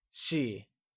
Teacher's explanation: she is pronounced in the neutral tone